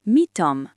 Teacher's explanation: Deux consonnes identiques se touchent, le son devient long. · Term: son long